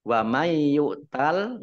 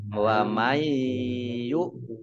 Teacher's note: Idgham Bighunnah masuk dengan mendengung mendengungnya dibaca dobel ditahan 2 harokat